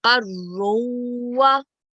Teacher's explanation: So qa has to be joined with ra mushaddid.